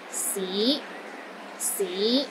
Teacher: the fifth tone is another Rising tone it starts low then Rises to the middle of your range